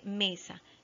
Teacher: la más fuerte es me la sílaba tónica